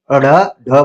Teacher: जिसके उच्चारण में जीभ को लपेटकर तालू के मध्य में चोट दी जाए वह उत्क्षिप्त कहलाता है। जैसे ड ढ। ठीक है?